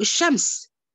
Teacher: we write لام شمسية but we don't pronounce it، إحنا بنكتبها بس ما بننطقهاش. It merged into sheen أو into the letter after، بيحصل لها إضغام في الحرف المشدد، يبقى it is merged into the مشدد letter.